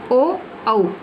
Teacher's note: कंठ और होठ से मिलकर के बोला जाने वाला वर्ण ओ औ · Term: कंठोष्ठ